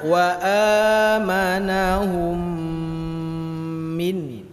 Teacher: Wa amanahum, mim mati berjumpa dengan mim, lama.